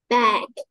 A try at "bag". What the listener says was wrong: Yếu âm đuôi con.